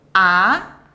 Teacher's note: Second tone, á, start from the lower and sharply get up